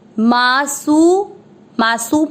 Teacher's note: स का बहुत डिफरेंस ध्यान रखना है, पहले है षटकोण वाला क्षत्रिय के अंदर, तो राक्ष और सी की मात्रा बड़ी है, स है ये, राक्षसी। मासु, मासु मात्रा सू की छोटी, लंबा नहीं खींचेंगे।